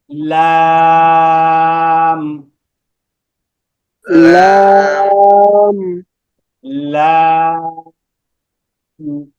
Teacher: এই যে জিহ্বার আগার যে কিনারাটা আছে, দেখা যাচ্ছে না এখানে? জিহ্বার আগার কিনারা উপরের দাঁতের মায়ের সঙ্গে লাগবে।